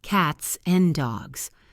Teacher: We link the S to the and, cats and dogs.